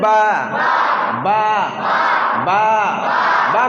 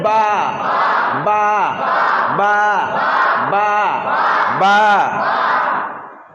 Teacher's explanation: কোন জায়গা থেকে উচ্চারণ হয় দুটা ঠোঁটের মাঝখান হইতে